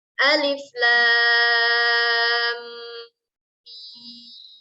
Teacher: Kita baca menjadi 6 harokat.